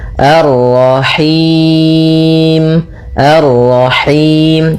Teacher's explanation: Atau dibaca dengan him, nah ini masuk hidung tapi enggak mau dia lepas dari yang namanya masuk hidung dan juga lepas dari yang namanya imalah yaitu harus kasrah sempurna